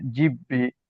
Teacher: বায়ের নিচে জের আছে, এটাকে হারাকাত বলে, এটাকে তাড়াতাড়ি পড়তে হয়। বায়ের উপরে তাসদিদ আছে, তাসদিদ থাকলে সেটাকে দুবার করে পড়তে হবে, একবার প্রথম অক্ষরটার সঙ্গে জুড়িয়ে পড়তে হবে, একবার নিজে নিজে পড়তে হবে। তো এটা উচ্চারণ হবে জিব্বি।